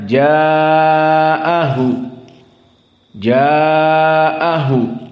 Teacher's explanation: adalah ikhfa dan ja mad wajib muttasil maka qiraah dari alqisai mad wajib dihukumi dengan tawassut maka hanya dibaca empat saja